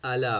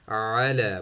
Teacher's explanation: اگر سٹاپ ہو رہی ہے تو حمزہ کی آواز ہے. الا پڑھیں گے تو حمزہ کی آواز، علا پڑھیں گے تو مڈل تھروٹ سے عین کی آواز ہے